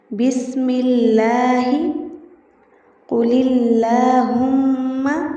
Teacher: اس کے بعد بائیں جانب دیکھیں لام کی ترقیق۔ لفظ اللہ یا اللہم کے لام سے پہلے اگر زیر ہو تو ایسی صورت میں اس کا لام باریک پڑھیں گے